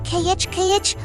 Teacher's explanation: The Spanish J is a strong friction sound created deep in your throat. It is similar to the German H sound in Bach, or like you are clearing your throat aggressively.